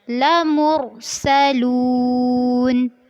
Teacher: میم کو را سے ملانا ہے اور را کو پر کرنا ہے · لمرسلون، لام واو پیش لو، اس میں آپ نے مد اصلی کرنی ہے اور اس کو لمبا کرنا ہے